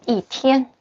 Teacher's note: And the 天, first tone. Okay, before the first tone, the number of 1, the pronunciation, it's 4th tone